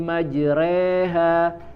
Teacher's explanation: Ini imalah, ya, condong, dia harokatnya fathah tapi tidak dibaca majroha